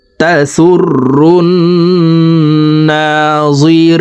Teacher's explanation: পেশওয়ালা রটি তাসদিদওয়ালা নুনের সাথে 3 সেকেন্ড পরিমাণ গুন্নাহ করে পড়ব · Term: ওয়াজিব গুন্না